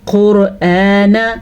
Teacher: حروف مستعلیہ 7 ہیں، خا، صاد، ضاد، غین، طا، قاف، ضا، یہ 7 حروف مستعلیہ ہیں۔ ان کو ہر صورت میں پر یعنی کہ موٹا کر کے پڑھا جاتا ہے